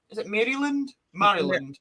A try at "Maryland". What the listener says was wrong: You don't actually say the Mary part. It's Maryland. It's like a short I. Maryland.